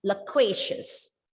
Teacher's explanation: you can see the two schwa sounds in the first and the last vowel sound